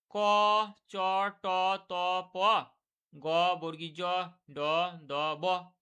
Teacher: এগুলো প্রাণবায়ু কম লেগেছে। তার জন্য এগুলো হচ্ছে অল্পপ্রাণ ধ্বনি।